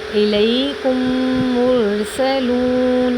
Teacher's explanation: میم ساکن کے بعد میم آئے تو میم کو دوسرے میم سے ملا کر غنہ کے ساتھ پڑھیں گے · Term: ادغام